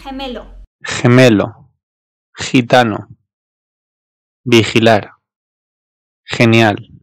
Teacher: E ya da İ harfinden önce gelirse eğer, işte burada gırtlaktan bir H sesi çıkarıyor. Yani H, H gibi okunuyor.